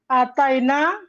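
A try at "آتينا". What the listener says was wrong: Ya, jadi nanya panjang, Neng. Kan ataina di ayat itu kan panjang. ataina. Ya, sama dengan di ayat.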